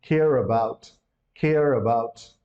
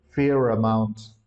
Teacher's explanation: if we add any word having the vowel initial sound we add the r sound over there